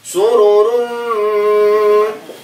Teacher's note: Fiha sururum su ru ru pendek dibacanya. Sururum mim tasydid, mim bertasydid maka ditahan.